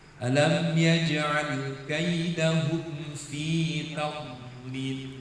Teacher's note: Huruf dhad salah satu sifatnya adalah rifwah atau rokhawah, suara ngalir.